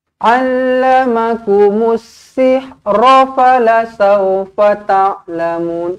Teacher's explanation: Masukkan alif lam syamsiah. Tak perlu dimatikan lam ini, tak perlu disebut dengan allamakumul.